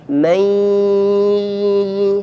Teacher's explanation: Berikutnya ketika nun sukun bertemu ya, mai, sebagian suaranya jangan lupa dimasukkan ke rongga hidung